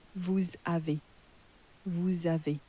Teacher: So, although we started off pronouncing you have as vous avez, we're now going to pronounce it in a more typically French way as vous avez, vous avez. And we can pronounce that S because it's been crashed into the A at the beginning of the next word